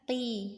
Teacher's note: Kemudian qi tetap tebal ya, qi ini juga isti'la tapi tidak itbaq. qi tetap tebal tapi tidak setebal ketika fathah